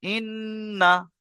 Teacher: গুন্না করবেন ইন্না, কিন্তু টান হবে না